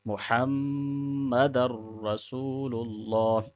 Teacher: میم مشدد پہ بھی غنہ ہوتا ہے، ناک میں آواز کو لے کے جانا ہے